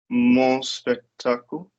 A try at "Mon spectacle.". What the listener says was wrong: You're making it sound like my tackle. Mon spectacle.